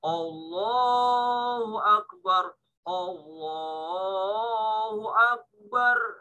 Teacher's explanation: Karena ada huruf di depannya itu tebal sehingga A terpengaruh dia. Jadi bacanya ikut-ikutan tebal